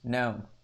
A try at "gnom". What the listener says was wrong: Gnome. You pronounce the G.